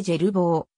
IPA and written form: ˈʒerboː (Gerbeaud)